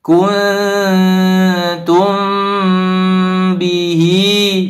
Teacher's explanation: mim sukun bertemu dengan huruf ba istilah tajwidnya Ikhfa Syafawi maka didengungkan juga